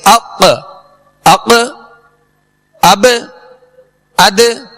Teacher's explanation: آواز مخرج میں جنبش کرے گی جس سے آواز لوٹتی ہوئی آئے گی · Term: قلقلہ